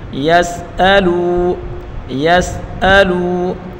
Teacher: واو مدہ ہے، اس کو ایک الف کی مقدار کھینچ کر پڑھیں گے